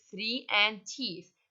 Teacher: the theta the voiceless dental sound